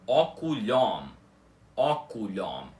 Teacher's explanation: o M é sempre pronunciado e o O continua com o som aberto dele